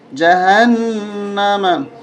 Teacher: وَأَعَدَّ، وَأَعَدَّ لَهُمْ، جیم زبر جا، ہا نون زبر، ہن نون زبر نا، اس نون کے اوپر غنہ ہوگا، تشدید ہے